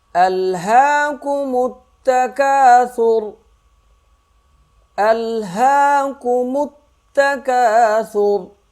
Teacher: حمزہ جو ہے وہ لام سے مل جائے گا، ہا کو 1 الف کے برابر کھینچیں گے